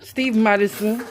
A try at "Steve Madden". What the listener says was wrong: There's no S at the end.